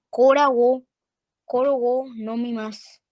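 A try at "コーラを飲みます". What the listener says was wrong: Cora o nomimasu. Cora o nomimasu. Bien, sí, la partícula o se lee con la palabra, no se hace pausa, no se hace pausa.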